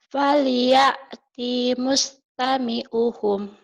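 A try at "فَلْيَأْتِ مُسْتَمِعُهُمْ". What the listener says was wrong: T-nya pendek. Falya timusnya pendek. Falya timustami'uhum. Falya timustami'uhum.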